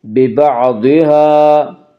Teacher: ضاد کو پر پڑھیں گے، ضاد حروف مستعلیہ میں سے ہے، حروف مستعلیہ 7 ہیں جن کا مجموعہ خص ضغط قز ہے، یعنی خا صاد ضاد غین طا قاف ذا، یہ 7 حروف ہمیشہ ہر حال میں پر پڑے جاتے ہیں۔